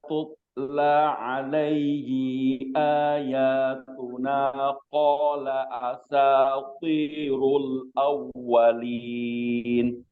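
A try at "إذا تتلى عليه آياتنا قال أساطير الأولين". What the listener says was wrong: Di sini tak sukunnya, sifat hamznya belum keluar, dan di sini hinya pendek ya. Jangan dipanjangkan. Idza tutla alaihi aya ya. Jangan alaihi aya.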